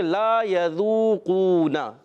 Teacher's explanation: ایک الف کھینچنا ہے. ذال کی ادائیگی زا سے نہیں بدلنی · اچھا واو مدہ واو ساکن سے پہلے پیش واو مدہ ایک الف کھینچنا ہے · اس کو بھی ایک الف کھینچنا ہے. نون کی زبر کو نہیں کھینچیں گے. تو پڑھیں گے لا یذوقون.